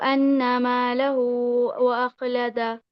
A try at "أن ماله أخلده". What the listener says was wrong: We don't read this wow. This wow is to stretch the dhamma. So we say ما له أخلده.